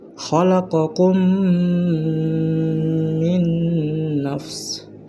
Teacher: maka cara bacanya adalah menyuarakan mim rangkap atau ditasjidkan. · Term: idgham mimi